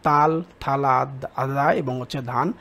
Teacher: জীভের ডগা উপরের পার্টি দাঁতে লেগে বায়ুপথে বাধা সৃষ্টি করে কোন ব্যঞ্জন ধ্বনি তৈরি করে এটা হবে দন্ত ব্যঞ্জন